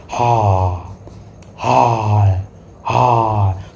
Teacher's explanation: कंठ द्वार में कंपन होता है। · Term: काकल्य व्यंजन